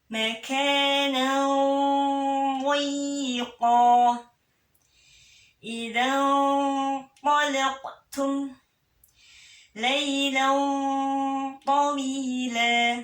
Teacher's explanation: Huruf dha istiqalah, jangan lupa kayak menggelayut.